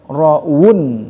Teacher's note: Waw huruf syafatain dua bibir